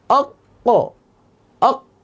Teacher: 4 নম্বর মাখরাজ কফ, জিহ্বার গোড়া তার বরাবর উপরে তালুর সাথে লাগিয়ে উচ্চারিত হয়